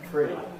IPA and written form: frə̯i (three)